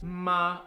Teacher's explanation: the first tone is just holding a higher pitch than the rest of the other tones